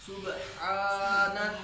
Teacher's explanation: ہا کو حلق کے درمیان سے نکالیں گے